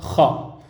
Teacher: Le kha, il vient du haut de la gorge